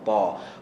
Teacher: Qalqalah pada huruf ta ialah seakan-akan dia berbaris atas ta